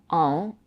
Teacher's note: The stress is on the second syllables, sang. The last vowel is nasalized, en, and the final t is not pronounced.